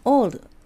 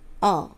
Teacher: 比較的大きなあに近いおですね